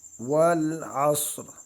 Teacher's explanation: صاد کو موٹا کر کے پڑھیں گے